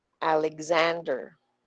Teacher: Nag tagal tayo at lumalakas yung boses natin When we get to the second a sa pangalan niya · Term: stress syllable